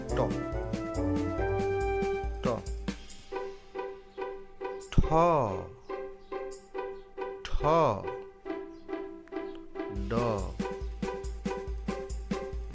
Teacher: ট হবে দাঁতের কাছাকাছি স্থান থেকে উচ্চারণ